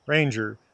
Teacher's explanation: Words can be stressed on the first syllable like ranger.